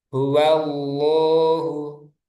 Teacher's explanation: huwallahu lamnya dibaca tebal